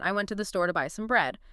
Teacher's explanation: We hit the important words harder, the nouns, the main verbs, the adjectives, adverbs. And the little function words like the to-a, they often get sort of squashed or linked together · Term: sentence stress